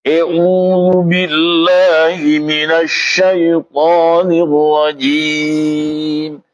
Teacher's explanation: kalau E itu bukan harkat fathah tapi kalau E itu harkat imalah